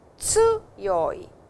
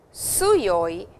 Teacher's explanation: a small t sound is there and it is not suyoi, which is an s sound